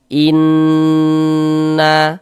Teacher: Maka di bagian in-nya itu suaranya itu kita tahan, kita panjangkan sepanjang 2 harokat. Kita gunnahkan. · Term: gunnah musyaddadah